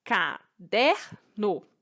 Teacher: é um der então a sílaba tônica é um der certo a palavra caderno tem três sílabas e a mais forte é o der